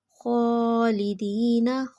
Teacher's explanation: خوا کے اوپر کھڑا زبر اس لیے 1 فنگر کے برابر لمبا کیا